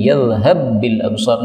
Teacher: Yakasana baruqihi yadhhab bil absar, juga idgham lagi karena ba ketemu dengan ba